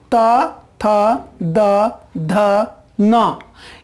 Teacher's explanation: हमारा जो जीभ है वो जा करके दांत में सट रहा है इन वर्णों का उच्चारण करते वक्त।